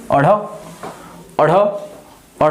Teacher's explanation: आपकी जीभ ऊपर जाएगी फिर झटके से नीचे आएगी और ये उत्क्षेपण की प्रक्रिया होगी। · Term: उत्क्षिप्त व्यंजन